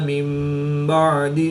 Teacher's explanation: نون ساکن کے بعد حرف با ہے تو یہاں پر اقلاب ہوگا، نون ساکن کو میم سے بدل کر غنہ زمانی کر کے پڑھیں گے